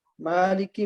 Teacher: جیسے مالکی، مالکی میم کو جب پڑھتے ہیں، اب میم کی ادائیگی کا آغاز کرتے ہیں تو ناک میں آواز ضرور جاتی ہے لیکن وہ ٹھہرتی نہیں ہے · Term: غنہ